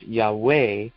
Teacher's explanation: thought to be pronounced Yahweh with the accent on the second syllable